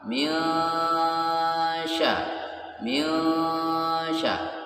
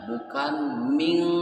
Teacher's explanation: nun mati bertemu huruf shin. Ya, ini dinamakan hukum tajwidnya adalah ikhfa hakiki. Suaranya harus samar. Minsya, minsya, bukan ming, bukan berbunyi huruf eng.